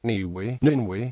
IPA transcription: nɨwɨ